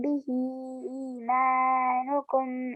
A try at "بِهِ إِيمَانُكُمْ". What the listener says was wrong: यहाँ से थोड़ा सा बिही ईमानुकुम, ही को आपने लंबा किया.